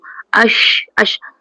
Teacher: Tafashi tu berhamburan angin antara gigi depan dan langit atas. Belakang gigi tu.